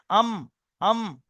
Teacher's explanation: আচ্ছা, মিমের মাখরাজ দুই ঠোঁটের শুকনো অংশ, দুই ঠোঁট, একটা ভিজে অংশ হয় ভিতরে আর একটা হয় উপরের শুকনো অংশ, এই শুকনো অংশ মিলিত হবে আম, আম। দুই ঠোঁট শুকনো অংশ মিলিত হয় উচ্চারণ হয় মিম, আম।